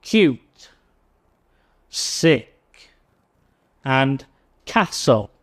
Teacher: the K sound, which is unvoiced, and you can see that in words such as cute, sick, and castle. So this sound can come at the start or at the end of a word.